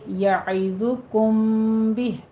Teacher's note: ضا کو پر پڑھنا ہے، ہونٹ گول کیجیے